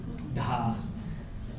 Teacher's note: So yeah, in my analysis we don't have retroflexes in Bengali, so it would be the alveolar T. But no, it's the voiced aspirated dental D